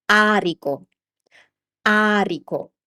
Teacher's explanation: I'm spending more time on the beginning on the first vowel which is the aero ao.